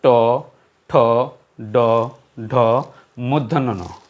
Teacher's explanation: যে জিহ্বার অগ্রভাগ ওপর তালুর মাঝে স্পর্শ করে উচ্চারিত হয়। কেমন একটু লক্ষ্য করুন, এই আমার বৃদ্ধাঙ্গুলটা ওপর তালু আর তর্জনী আঙ্গুলটা জিহ্বার আগাটা ওপর তালুতে গিয়ে মাঝ বরাবর স্পর্শ করে এভাবে উচ্চারণ হয় ট, ঠ, ড, ঢ, মূর্ধন্য ন। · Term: মূর্ধন্যজাত ধ্বনি